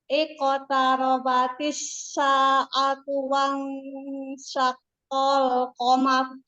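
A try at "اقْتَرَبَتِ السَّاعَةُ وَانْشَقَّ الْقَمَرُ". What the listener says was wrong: Hati-hati pengucapan sin tadi dan shin itu sin titik sin yang tidak ada titik dan sin yang titiknya 3 itu masih hampir sama tadi pengucapan.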